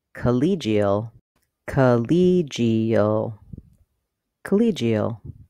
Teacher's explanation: The clear vowel is on the ka syllable, college. In collegial, the second syllable is stressed, the letter E says E, collegial, collegial, collegial.